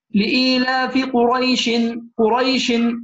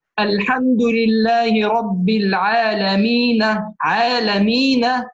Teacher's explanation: قريش الآن عندنا راء مفتوحة ويا ساكنة، هل تحقق عندنا المد؟ لم تتحقق شروط المد. هذا يسمى حرف لين، وحرف اللين عند الوصل لا يترتب عليه مد.